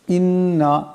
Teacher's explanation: এই নুন মুশাদ্দাদকে এক আলিফ পরিমাণ গুন্না করিয়া পড়তে হবে